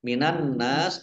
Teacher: Nun tasdid dibaca gunah atau mendengung ditahan dua harakat · Minan nas alif lam samsiah karena tidak dibaca langsung masuk ke huruf berikutnya yaitu nun, ditandai nunnya ada tasdidnya, nun tasdid dibaca gunnah atau mendengung